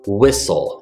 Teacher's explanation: the t is completely silent ignore the T